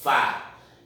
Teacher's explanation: Por exemplo, sofá. A última sílaba é a mais forte, que a gente chama de tônica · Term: oxítona